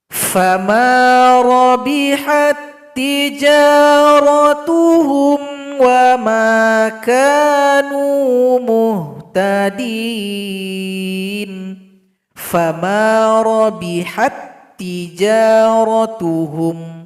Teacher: Contoh berikutnya huruf ta sukun berjumpa dengan huruf ta. Ta sukun tidak dibaca lagi karena telah gabung kepada huruf ta yang berikutnya.